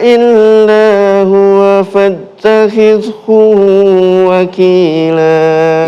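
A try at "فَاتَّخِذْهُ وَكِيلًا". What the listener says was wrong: Hu-nya pendek.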